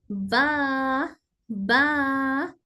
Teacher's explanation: बा दोनों होठों के होठों को मिलाकर अदा किया जाता है लेकिन मीम के मुकाबिल ज्यादा मजबूत बंद होने के साथ